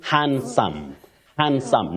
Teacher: he is so oh hand no hand no you say hand that D is not pronounced in that word